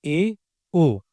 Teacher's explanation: संवृत का मतलब होता है बंद, तो अर्ध संवृत का मतलब हुआ आधा बंद, या कहे तो मुंह आधे से भी कम खुलता है। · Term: अर्ध संवृत स्वर